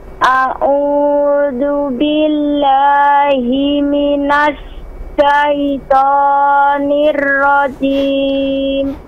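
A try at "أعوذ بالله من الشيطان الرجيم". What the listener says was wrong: Nah, itu tadi sudah benar tapi tertahan. Jangan minas syaitan, dialirkan aja. Ya, langsung masuk, dialirkan langsung masuk ke hurufnya.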